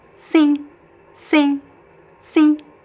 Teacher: You can, if you want, pronounce like a very subtle M n as I said before, but also there's no clear N sound. Okay, it's just a nasal vowel.